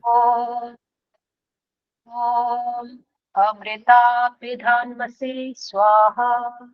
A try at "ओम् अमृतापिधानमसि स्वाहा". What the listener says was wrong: देखो आपने भी वही गलती की है, न हलंत जैसा ही बोला है अभी भी।